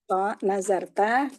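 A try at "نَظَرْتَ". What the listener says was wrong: Laisa za, tapi zo. Zo. Nazor. Zo. Bukan zal. Jadi nazorota, nazortuma.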